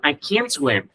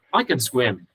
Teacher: khi là không thể nó nhấn rất mạnh chữ can nó lên, còn khi mà có thể nó sẽ đọc rất yếu và đọc là chữ can.